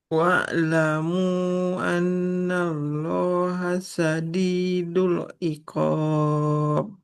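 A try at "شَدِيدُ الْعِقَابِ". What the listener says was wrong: Nah, huruf shin. Syadidul. Qalqalah, baju di toko. Huruf ba, jim, dal, to. Qaf, memantul. Syadidul iqab. PR-nya di huruf shin ya. Jangan jadi sa. Ingat titiknya 3 dia. kemudian panjang pendeknya. masih masih perlu dilatih lagi.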